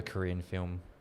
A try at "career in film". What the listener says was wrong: A career in film, not a Korean film. It sounded like a Korean film.